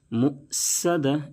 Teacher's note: صاد کو ہمیشہ موٹا کریں گے کیونکہ صاد بھی حروف مستعلیہ کے 7 حرفوں میں سے ہے. صاد کو اگر پر نہیں کیے تو سین سے بدل جائے گا.